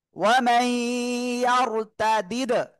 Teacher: কলকলার অক্ষর 5টার একটা অক্ষর দাল সাকিন অবস্থায় আসছে, এজন্য আমরা ধাক্কা দিয়ে পড়বো।